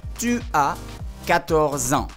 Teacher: El número se pega con la palabra años. La última consonante del número se pega con la palabra años.